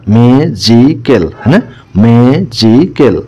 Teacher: the word magical is pronounced with more force in the first syllable